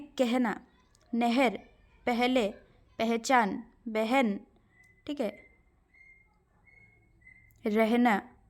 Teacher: ह से पहले अगर अ है तो उसका उच्चारण कैसे होगा, ए जैसा